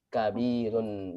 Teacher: Itu sifat hurufnya adalah tawasud. Tawasud itu harus mengalir. Jadi nggak langsung berhenti.